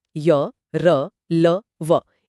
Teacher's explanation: इनके उच्चारण में जीभ पूरी तरह स्पर्श नहीं करती। इसलिए इनमें एक प्रवाह होता है स्वरों जैसा। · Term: अंतस्थ व्यंजन